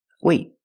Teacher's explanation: I stop the air. I stop the air with my tongue in the T position.